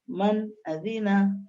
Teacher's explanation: جلدی ظاہر کر کے پڑھیں گے نون کی آواز کو